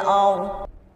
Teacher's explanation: Roknya sukun, dodnya juga menjadi sukun karena berhenti. Nah, ini harus diperjelas dua-duanya ya.